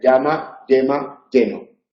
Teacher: El aire sale por la punta de la lengua en lugar de salir por los lados. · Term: yeísmo